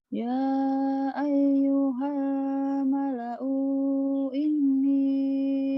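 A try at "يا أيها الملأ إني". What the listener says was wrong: Ya ayyuhal mala'u inni. U-nya pendek ya Kak. Pendek.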